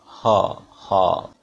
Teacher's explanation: ये glottal sound है, हा साउंड, हा हा। तो इसमें बिल्कुल यहाँ वोकल कॉर्ड में महसूस होगा आपको अगर हा साउंड आप बोलते हो